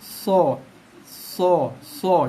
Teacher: Hujung lidah sentuh belakang gigi bawah. Kemudian pangkal lidah kita naikkan sikit. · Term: bunyi so